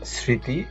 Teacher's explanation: শব্দের আদিতে ব্যঞ্জনের যুক্ত মফলা থাকলে সেই মফলা উচ্চারিত হয় না। তবে মফলা যুক্ত ব্যঞ্জনে যে স্বরধ্বনি থাকে তা সানুনাসিক উচ্চারিত হয়।